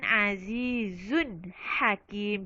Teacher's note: Jadi jangan dengung dekat tanwin Azizun. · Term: izhar halki